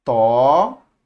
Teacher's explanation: Perceba que todas essas palavras têm sua antepenúltima sílaba tônica